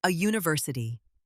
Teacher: Because it sounds like university. That Y sound at the beginning means we use a, not an.